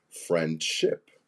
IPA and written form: ˈfrɛndʃɪp (Friendship)